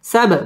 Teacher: বা কলকলার হরফ ধাক্কা দিয়ে পড়তে হবে